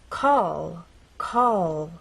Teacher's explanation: our tongue pressed against the bump in words like call call as you finish the word the tongue does not drop down it stays pressed against that bump · in this final position we're going to keep the tip of our tongue pressed against the bump in words like call call as you finish the word the